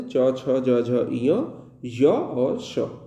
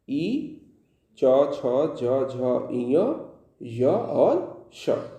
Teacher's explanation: तालव्य वर्ण जो तालु स्थान जो होता है वो देखेंगे आप एकदम गले नली जो कंठ वर्ण है उसके ठीक एकदम ऊपर का जो स्थान होता है वो तालव्य स्थान होता है